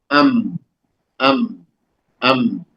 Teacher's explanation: मीम होठों के सूखे हिस्से को मिलने से अदा होता है। ये भी इन दोनों होठों से, दोनों होठों को बैक वक्त मिलाने से अदा होता है, लेकिन बाहर का हिस्सा, खुश्क हिस्सा, इसमें बा के मुकाबिल में ज्यादा मिलता है।